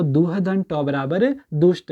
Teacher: तो विसर्ग के बाद ट है तो किस में बदलेगा, मूर्धन्य वाले आधे श में